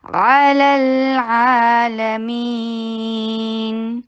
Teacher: लाम को लाम के साथ मिलाते हुए तवस्सुत का टाइम दीजिए। अलल ये ल वाला टाइम जो है ना वो तवस्सुत का टाइम दे।